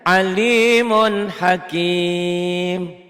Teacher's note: dibaca apa adanya tanpa panjang tanpa dengung tepat guna tanpa ikhfa tanpa ditahan tanpa sabar tanpa melebur ya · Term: Idhar